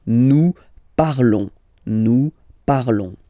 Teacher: Remember, final s is not pronounced